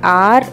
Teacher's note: r is the voiced post alveolar approximant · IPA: /r/